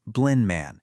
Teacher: those T and D sounds, well, they often just disappear when they get sandwiched between a bunch of other consonant sounds. It just makes things way easier and faster to say. · That D is stuck right between an N and an M. So what happens in real speech? It becomes blind man. The D is just gone. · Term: deletion